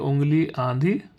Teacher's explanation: बोले जाते हैं तो उनके ऊपर चंद्र बिंदु लगाया जाता है ऐसे स्वर नाक से बोले जाने के कारण अनुनासिक कहलाते हैं